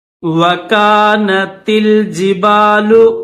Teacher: تا کو لام کے ساتھ ملائیں گے